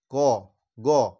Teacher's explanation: এইগুলো উচ্চারণ করতে আমাদের শ্বাসবায়ু খুব অল্প পরিমাণে খরচা হয়, প্রথম আর তৃতীয় বর্ণটা। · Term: অল্প প্রাণ